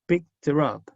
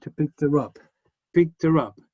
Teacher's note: Los phrasal verbs tienen una pronunciación muy divertida porque picked her up, cuando va un objeto al medio, picked her up, al final, la preposición final, que es en este caso up, sube de sonido, sube de entonación.